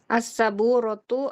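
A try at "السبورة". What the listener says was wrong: As-saburotu salah. Ada yang kurang. As-saburotu. Yang benar as-saburotu. Baknya bertasydid.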